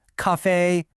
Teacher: The first one, ca, is high and flat. The second one, f is also high and flat.